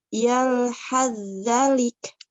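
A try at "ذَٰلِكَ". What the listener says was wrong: Za panjang.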